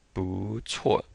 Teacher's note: 不 before a fourth tone will change to a second tone